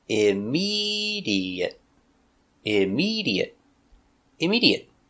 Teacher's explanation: four syllables stress on the second syllable